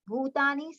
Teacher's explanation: we have to be always bhu long, ta long, ni short.